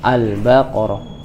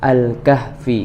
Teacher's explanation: maka lamnya dibaca jelas ketika pengucapan dan tidak boleh melebur suaranya dari huruf setelahnya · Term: alif lam qamariyah